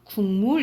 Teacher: 국물 이렇게 발음 나거든요. 그래서 이 기억이 미음의 영향을 받아서 이응으로 발음되는데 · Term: 역행동화